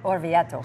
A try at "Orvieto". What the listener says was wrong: Now, oh, you roll the R a little bit more. Roll the R.